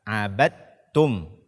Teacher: membaca dal sukun dengan qalqalah pada kata abadtum